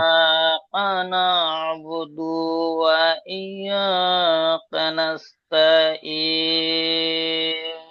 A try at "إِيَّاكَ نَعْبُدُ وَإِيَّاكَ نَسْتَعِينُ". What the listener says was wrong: মাশাআল্লাহ ভাই, দেখেন আপনি বুদু একটু টান দিয়ে ফেলেছেন। কোনোটাই টান হবে না কিন্তু, এই ইয়া ছাড়া। ইয়াকা না'বুদু ওয়া ইয়াকা নাস্তাঈন।